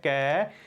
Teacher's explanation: ਕੱਕਾ ਜਿਹੜੀ ਧੁਨੀ ਹੈ ਕੈ, ਉਸ ਦਾ ਉਚਾਰਨ ਕੰਠ ਦੇ ਵਿੱਚੋਂ ਹੁੰਦਾ ਹੈ, ਇਹ ਹੈ ਕੰਠੀ ਧੁਨੀ।